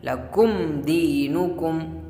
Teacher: میم ساکن کے بعد با اور میم کے علاوہ کوئی اور حرف ہے یعنی دال ہے، لکم دینکم، تو میم کو ظاہر کر کے پڑھیں گے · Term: اظہار شفوی